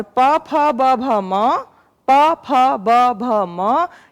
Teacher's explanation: होठों के मिलने से आपका उच्चारण हो रहा है, तो ये ओष्ठ हो गए। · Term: ओष्ठ ध्वनि